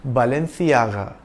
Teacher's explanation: in Spain C is pronounced like the th in thing